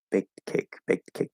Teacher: yes, we're going to release that T